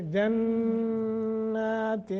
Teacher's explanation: نون پر جب شد ہو تو وہاں غنہ ہوتا ہے